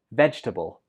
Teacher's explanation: some students pronounce this with four syllables but that's not correct it only has three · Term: silent syllable